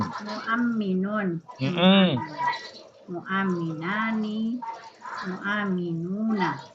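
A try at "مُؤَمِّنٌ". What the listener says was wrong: Bukan mu'al tapi mu'am. Pakai tasdid.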